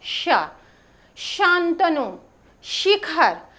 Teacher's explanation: देखिए एक्चुअली यह श तालव्य इसका उच्चारण करते समय हमारी जीहवा हमारे मुख विवर के जिस अंदर भाग को स्पर्श करती है वहां से जब ध्वनि निकलती है तो उसी से उसका नाम जैसे श बोलिए तालव्य श बोलते समय जीहवा हमारी तालु को स्पर्श करती है · शांतनु, शिखर, ऐसे उच्चारण आप जब करेंगे तो यह तालु में हमारी जिह्वा स्पर्श करेगी